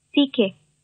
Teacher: 稍微有点送气啊，送气量不是很大，但是呢，也是有的